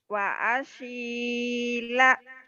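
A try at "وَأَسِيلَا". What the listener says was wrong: wa asila salah. Yang panjang dua si sama lanya ya.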